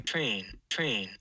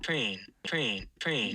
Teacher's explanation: i've also got a voiceless r there because it's kind of hard to hear any sort of r